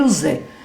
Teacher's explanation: os fonemas Z são fonemas sonoros, é um fonema mais agradável.